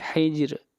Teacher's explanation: را کو باریک پڑھیں گے، را سے پہلے والا حرف ساکن ہے اور اس سے پہلے والے حرف کے نیچے زیر ہے